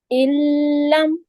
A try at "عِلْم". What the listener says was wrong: ٹھیک ہے، بہت زیادہ اسٹریس نہ دیں. ٹھیک ہے، اس کو مضبوطی سے پکڑیں لیکن بہت زیادہ اسٹریس نہیں دیں.